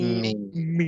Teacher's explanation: দুই ঠোঁটের শুকনো জায়গা হতে